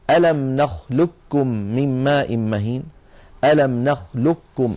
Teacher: التقى في قراءه قاف ساكنه بعدها كاف متحركه نحن نعلم بان القاف من اقصى اللسان مع ما يحاذيها من الحنك والكاف اسفل منها بقليل القاف مفخمه والكاف مرققه